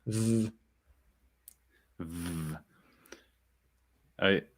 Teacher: the answer is voiced labiodental fricative. · Okay, so the point is that you have the harder pronunciation which has the dot in it, and you've got the softer, more aspirated pronunciation where you breathe through it, so it's continuous. It's a v sound, so you can have continuity with the v sound. It can like go on forever, but if it has a dot in it, then it's a stop, just like the Aleph.